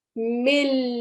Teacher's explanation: Now here you can clearly hear that milla, I'm totally eliminating the sound of the noon. You can't hear me give the sound of the noon at all. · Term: idgham kamil